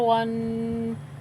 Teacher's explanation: واو کو منہ گول کر کے ادا کرنا ہے، دانتوں کو ہونٹوں کے نیچے نہیں دبانا، اور جو دو زبر ہیں یہ وقف کی صورت میں الف سے بدل جاتی ہے۔